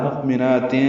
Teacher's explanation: حمزہ ساکن جھٹکے سے، نون کو 2 حرکات لمبا کرنا ہے